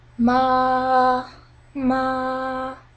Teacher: is the flat tone it's like this in the flat tone it's a very high pitched but very straight flat sound